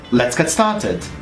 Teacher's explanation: there is more stress on started as it is the most significant word in this sentence